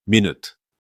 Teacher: Minute with the stress on the first syllable is the noun you already know.